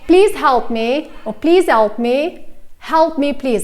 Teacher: At the beginning of the sentence, I would always pronounce the H sound.